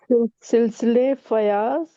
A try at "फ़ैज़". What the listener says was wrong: फयाज नहीं है, अगर अलीफ नहीं फैज, फैज,